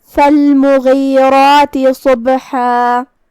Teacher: کلمت فالمغیرات میں یہاں حرف الغین ہے. غین کی ادائیگی حلق کے اوپر والے حصے سے ہے. غین حروف التفخیم میں سے بھی ہے تو ہم اسے بھاری آواز میں پڑھیں گے.